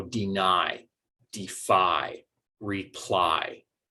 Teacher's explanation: generally we are stressing that second syllable that syllable is receiving quite a bit of stress in the word